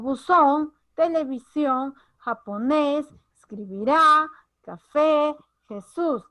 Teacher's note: como podrás observar tienen fuerza de voz en la última sílaba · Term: agudas